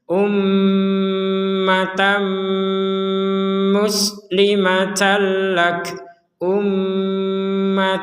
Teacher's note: karena dia bertemu dengan mim maka yang jelas Tadi tannya ini kita masukkan ke mim sehingga menjadi Tam dari Tan ya t a n menjadi Tam t a seperti itu Maksudnya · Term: disertai dengungan